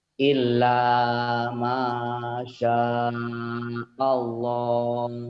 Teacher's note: Tebal, tafkhim. Spesial lafad Allah itu berbunyi O, ada W-nya seakan-akan ya. Kalau dia sebelumnya berbaris patah, atau doma berbaris di atas. · Lafad Allahnya dibaca tebal karena sebelum lafad Allah baris di atas.